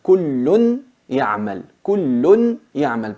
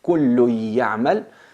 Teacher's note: كُلٌّ يَعْمَلْ, pero la fusionamos, كُلٌّ يَعْمَلْ, se convierte en una ya con shadda y la nun desaparece, pero mantenemos al gunna